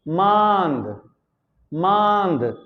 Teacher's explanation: मांद, देखिए चंद बिंदु लगी हुई है। जब चंद बिंदु लगी है तो हम जब बोल रहे हैं मांद, तो हवा नाक और मुख दोनों से एक साथ बाहर निकल रही है। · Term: अनुनासिक